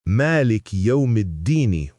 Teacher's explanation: Fourth, vowel length and consistency in hafs. In hafs, Malik yawmiddini with a clear long a on ma.